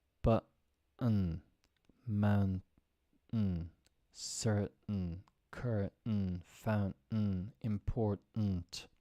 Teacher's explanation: We typically don't pronounce the T in these words. Instead, we cut the sound off by restricting airflow.